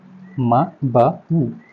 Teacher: म ब उ ये आपके ओष्ठ से है।